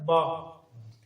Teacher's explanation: یہ پڑھا جاتا ہے ہونٹ سے. با جب پڑھتے ہیں تو دونوں ہونٹ آپس میں ملیں تو با پڑھا جاتا ہے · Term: حروف شفویہ